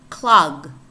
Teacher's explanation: Here we have two velar sounds, K and G.